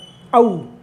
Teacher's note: खुल करके बंद होता है, यानी आधा खुला रहता है फिर बंद हो जाता है